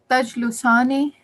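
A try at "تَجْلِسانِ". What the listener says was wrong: Lam has a kasra.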